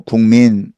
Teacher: 기역과 미음을 이응으로 바꿔내고 있죠.